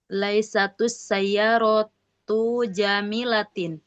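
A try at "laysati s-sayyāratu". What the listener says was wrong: Nah, taknya boleh kasrah. Taknya kasrah.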